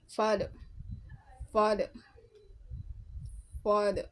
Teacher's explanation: pronounced as an open back and unrounded vowel